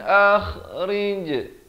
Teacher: An izhar halqi, jelaskan saja, jangan dipanjangkan. Kha di hujung kerongkong. Rij adalah lantunan, khokholah surah di sini.